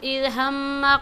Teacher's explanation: اذ ہم کے میم پر غنہ کریں گے